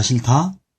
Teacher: 히읗과 디귿이 만나서 티읕이 됐습니다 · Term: 자음의 축약